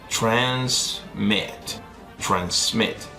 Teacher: El acento está en la última sílaba y termina en consonante, vocal, consonante.